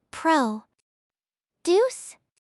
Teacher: The stress shifts to the second syllable. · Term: verb stress